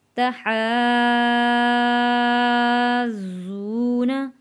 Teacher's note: ضاد کے اوپر تشدید ہے، حا جڑے گا ضاد کے ساتھ، پھر ضاد خود پڑھا جائے گا، اس کے بعد ضاد واو والے جزم کے ساتھ پڑھا جائے گا.